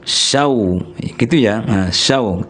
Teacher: Tapi sesudahnya ada huruf waw, maka syan itu digabungkan bunyinya ke huruf waw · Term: idgham